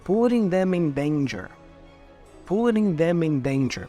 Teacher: you have to connect the M sound for them